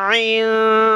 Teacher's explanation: हमज़ा को पढ़कर हम फ़ौरन आइन शुरू करेंगे, तो हमज़ा की आवाज़ ख़त्म होने के साथ आइन की आवाज़ स्टार्ट हो जाए